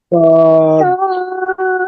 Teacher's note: সদ শিরশির মোটা আওয়াজে